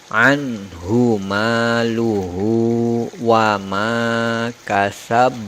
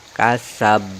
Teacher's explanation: Jadi langsung dimatikan dengan qalqalah atau pantulan yang besar · Kubra artinya besar. Cara membacanya dipantulkan dengan pantulan yang besar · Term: qalqalah kubra